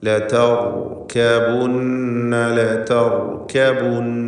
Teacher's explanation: സുക്കൂനും തൊട്ടുമുമ്പിൽ സ്ഥിരപ്പെട്ട ഫത്ഹുമാണ്, അഥവാ സുക്കൂനും തൊട്ടുമുമ്പിൽ ഫത്ഹും വന്നിട്ടുണ്ട്. സുക്കൂനും തൊട്ടുമുമ്പിൽ ഫത്ഹും വന്നതുകൊണ്ട് റായിനെ തടിപ്പിക്കണം, തഫ്ഖീം ചെയ്യുക. ലതർകബുന്ന, ലതർകബുന്ന, നൂൻ മുശദ്ദദയെ മണിക്കണം.